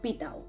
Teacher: Una asimilación regresiva en virtud de la cual la iod lo que hace es avanzar su punto de articulación y por eso aparece esta tau, esta dental sorda